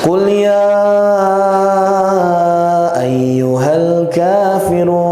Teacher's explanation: bacaan ya di situ memiliki hak untuk dipanjangkan mulai dari 4, 5 sampai 6 harokat